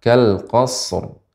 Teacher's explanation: Karena shad bukan huruf qalqalah, maka tidak boleh langsung kita mengucapkan kal qasarr ya karena tidak boleh dipantulkan. Sehingga cara membacanya adalah kal qasr.